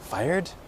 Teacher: make it a kind of a question intonation